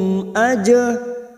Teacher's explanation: Yas'alukum aja jim sukun qalqalah sugro yang mati asli di tengah kalimat, namanya qalqalah sugro, jangan lupa dipantulkan